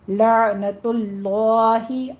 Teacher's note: عین کو وسط حلق میں لے جائیے اور قلقلہ نہیں کرنا ہے اس کے اوپر، لا نہیں کہنا، لا بس یہ سٹاپ ہو جائے گی آواز۔